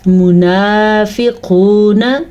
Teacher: موٹا قاف بھی اور واو مدہ بھی